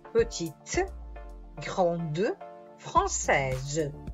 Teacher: la E ci fa pronunciare la consonante precedente